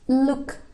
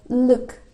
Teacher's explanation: Yang keenam ada simbol U, dia kayak tapal kuda gitu. Itu bacanya bukan U biasa tapi dia pendek sangat, dibaca Jadi ada penekanan di dalam tenggorokan.